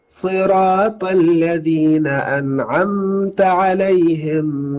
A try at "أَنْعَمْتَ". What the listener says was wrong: صراط الذين أنعمت، لا نضغط على الميم، نقولها مباشرة لأن ليس عليها شدة.